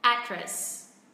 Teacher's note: mình sẽ xuống giọng âm tiết thứ hai